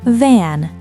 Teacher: Notice the vibration on van. Put your hand on your throat.